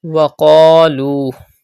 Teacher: Pronounce qaf with thicker voice because it is a mustaliya letter. Stretch alif madda and also waw madda.